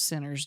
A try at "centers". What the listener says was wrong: Centers. It sounded like you said sinners.